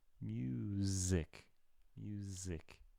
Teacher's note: Even with an S, it can sound like Z.